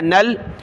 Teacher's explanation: نون کو لام کے ساتھ ملا ہے